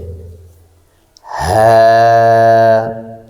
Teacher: হা হারফটি কণ্ঠনালীর শুরু হতে উচ্চারিত হয়